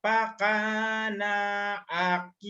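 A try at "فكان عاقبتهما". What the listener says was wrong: Nanya pendek. Fak yang panjang.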